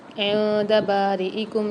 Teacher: نون ساکن کے بعد دال آ رہی ہے، یعنی یہاں پر فعال غنہ والا قاعدہ اور یہاں پر غنہ کر کے پڑھیں گے۔ با کے ساتھ الف مد آ رہی ہے، اس کو بھی ایک الف مدار کھینچ کے پڑھیں گے۔